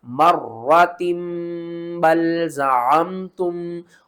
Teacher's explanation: نون ساکن اور تنوین کی آواز کو میم کی آواز میں بدل کر پڑھیں گے۔ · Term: اقلاب